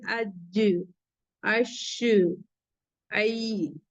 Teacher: जबान का दरमियानी हिस्सा और इसके मुकाबिल ऊपर का तालु यानी मिडिल पार्ट ऑफ द जो टंग है वो हमारा ऊपर का जो तालु होता है वहां पे टच हो रही है या नहीं। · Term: हुरूफ शजरिया